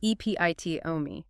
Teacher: Four syllables stress on the second.